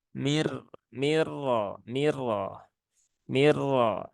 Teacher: Nah, ini ada idgham bila gunnah ya. Idgham bila gunnah yang melebur secara sempurna sehingga langsung ke huruf ro.